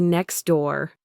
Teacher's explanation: Technically, there's a T sound at the end of next, but almost no native speaker says next door. We drop the T and say next door. It's smoother and faster.